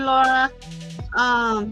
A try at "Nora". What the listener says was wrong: Nora, with an N, Oh, I thought you said Laura.